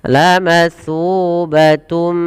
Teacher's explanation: masukkan kepada huruf mim dan kemudian ditahan dengan gunnah. Lamatsubatum, sepanjang 2 harokat baru dilepaskan. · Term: idgham bi gunnah